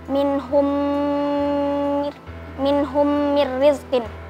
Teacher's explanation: Idgam mli minhum minhum rizqin hukumnya idgam mlain karena ada mim sukun bertemu dengan huruf mim dibaca mendengung. Masyaallah benar.